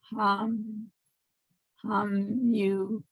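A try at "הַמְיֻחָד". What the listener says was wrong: It's not a blend. Hameh.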